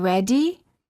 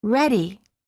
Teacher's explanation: Instead of saying ready, we say ready. It's the sound made with the tip of the tongue quickly tapping the gum ridge.